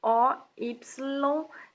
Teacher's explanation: Ora, do ponto de vista meramente linguístico, o fenômeno é o mesmo, palatalização. Só que o elemento provocador dessa palatalização, o Y, está antes do T e não depois dele